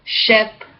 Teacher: Big S, voiceless, post-alveolar, fricative, ship